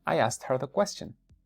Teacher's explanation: se reduce la H y apenas sale un pequeño un poquito de fricción